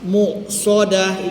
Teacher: hamzah huruf syiddah tertahan suara dan nafas